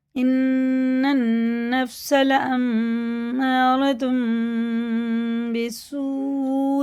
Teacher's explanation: دونوں نون میں شد غنہ کر کے پڑھیں گے